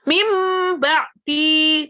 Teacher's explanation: Jadi nun matinya sudah tidak terdengar, tapi terdengarnya adalah huruf mim. Seperti ada mim mati di situ. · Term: iklab